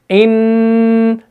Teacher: जुबान का किनारा ऊपर मुत्सल मसूड़ों से लगता है, तब जाके नून अदा होता है। इन, जुबान ऊपर जो तालों के साथ लगी हुई है, चिपकी हुई है, और हम आवाज को खाली यहां से निकाल रहे हैं।